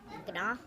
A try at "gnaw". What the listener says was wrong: Well, no, the G is silent. It's just one of those funny things.